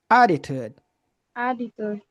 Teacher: So this words, we have three ways to pronounce it. When it's American, we get the double T. It sounds like a soft D.